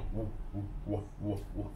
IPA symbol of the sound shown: w